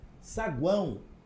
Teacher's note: O U é a semivogal, o A é a vogal e o O a semivogal.